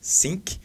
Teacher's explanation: A palavra think muitas vezes é pronunciada dessa maneira por alunos de inglês brasileiros, né, da maneira think, Ou seja, o TH parece que ele ganha um som de S,